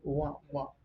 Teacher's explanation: upper teeth and lower lip are involved, so it is called labiodental sound. It is voiced sound.